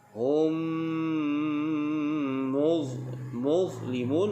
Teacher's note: mim mati bertemu dengan mim, namanya idgham mislain. Kita rapatkan bibir dengan dengung.